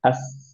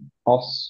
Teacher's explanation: আমরা সিন বলি বা হচ্ছে যে আস যখন বলছি, অস যখন বলছি, দুইটার ক্ষেত্রে একটা হুইসলিং সাউন্ড বের হয়, সেটাকে সফির বলে।